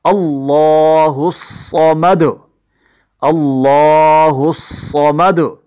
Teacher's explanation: صاد چونکہ مشددہ ہے اس لیے اس پر پھر اس کو موٹا بھی پڑھا جا رہا ہے